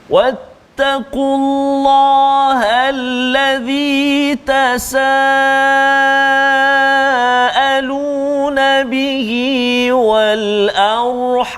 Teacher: huruf ra yang sukun ataupun mati, sebelum dia hamzah tu baris atas, maka ra dia kena tebal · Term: ra yang dibaca tebal